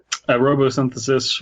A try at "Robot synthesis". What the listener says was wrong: it's robot synthesis. There's a T in there. Robot synthesis.